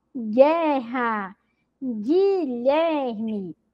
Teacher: a letra U não é pronunciada